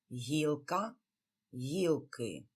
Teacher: And unlike the previous words, корень, коріння, where there was the shift of stress, in this case we do not change the stress. Both in singular and plural, one and the same syllable is stressed, the first one.